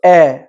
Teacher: আবার অনেক ভাই পড়ে ফেলি আমরা হামজা জবর এ, এ বলে ফেলি, এ, অর্থাৎ আমরা দুই ঠোঁটকে যখন বেশি ছড়িয়ে ফেলি তখন হামজাটা এমালা হয়ে যায়। তাহলে আমরা মধ্যম পন্থা ইনশাআল্লাহ অবলম্বন করব।